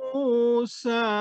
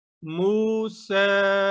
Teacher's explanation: موسیٰ کی سین پہ چھوٹی مد ہونے کی وجہ سے اس کو 3 نقطوں کے برابر لمبا کیا ہے